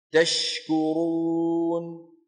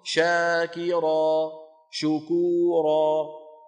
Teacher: الشين فيها تفشي في كل أحوالها، لكن تشكرون تفشيها أوضح من شاكرا شكورا